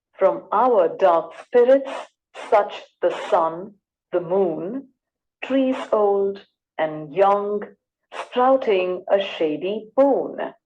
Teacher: there are five foots or units each containing one unstressed syllable followed by one stressed syllable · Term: iambic pentameter